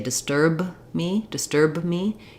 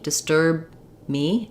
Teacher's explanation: I end up with an extra little schw sound there instead I just don't release that B I close my mouth for the B disturb me and then I release it into the the uh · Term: unreleased stop